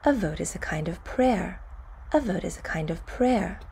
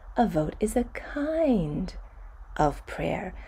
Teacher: kind is at the high end of my range and prayer is about as low as i can comfortably go